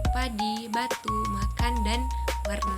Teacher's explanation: Bunyi bilabi dihasilkan oleh kedua bibir atau biasa juga disebut sebagai labium atas dan labium bawah. Kedua bibir ini saling mendekat atau saling menutup. Bibir bawah berfungsi sebagai artikulator aktif, sedangkan bibir atas berfungsi sebagai artikulator pasif atau titik artikulasi. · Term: bunyi bilabial